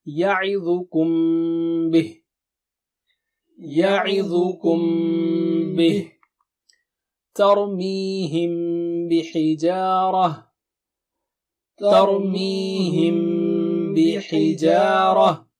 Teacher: For example, when you have Mim Sakina at the end of first word, ya'idukum, and you have ba at the beginning of second word, then we say it, we hide mim. Basically, you recite it with ghunna.